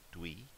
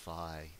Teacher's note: a voiced or unvoiced d sound followed by the semi-vowel w